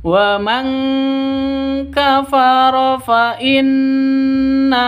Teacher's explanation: nun mati bertemu dengan kaf samar didengungkan siap-siap ke huruf kafnya nun matinya ditambah dengan n ng karena ikhfa hakiki